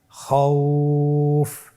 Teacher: এখন আমরা যদি লিনের হরফের বামের হরফটির উপর ওয়াকফ করি তাহলে আমাদেরকে এক আলিফ টেনে পড়তে হবে।